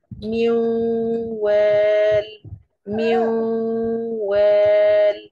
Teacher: فهنا عند الواو الساكنة أنا بعمل صوت الغنة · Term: الإدغام الناقص